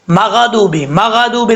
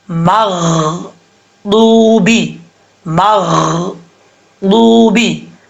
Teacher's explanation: میم کے بعد غین ہے، غین حروف مصطلحہ میں سے پر پڑھا جائے گا، لیکن اس کو پڑھتے ہوئے آپ نے ایک چیز کا خیال رکھنا ہے، میم غین زبر مغ، غین کی آواز آنی چاہیے اور کلکلا بالکل بھی نہیں آنا چاہیے۔ اگر آپ پڑھتے ہیں اس کو مغدوبی مغدوبی تو یہ غلط ہے، غین میں کلکلا ہو رہا ہے، ایسا نہیں پڑھنا، اس کو کیسے پڑھنا ہے مغدوبی مغدوبی۔